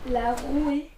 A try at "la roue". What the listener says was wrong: La roue, le E au féminin ne se prononce pas, on dit la roue.